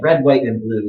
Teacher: so all of the items in the list go up except for it to last